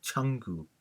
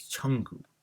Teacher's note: Then the second person pronoun you, cha, would now change to a possessive form of your as cha plus gu. There will be a nasal sound ng added in between to make it more easier when you pronounce, and it sounds more familiar now as changu.